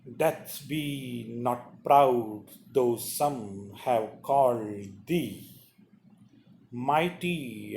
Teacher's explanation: The first syllable will be unstressed, then stress. Unstressed, dum, da, dum, da.